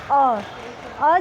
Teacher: जिह्वा का मध्य भाग प्रयोग हो रहा है